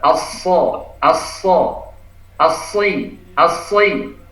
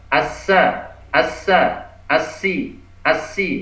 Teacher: Iya, karena shad ini makhrajnya sama, yang membedakan adalah sifatnya. Jadi kalau shad ini tebal atau isti'la, shad juga punya idbaq, yaitu punggung lidahnya merapat ke langit-langit, sehingga shadnya ini terdengar tebal.